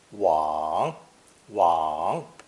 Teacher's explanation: this character is pronounced third tone wong wong and also means to go forward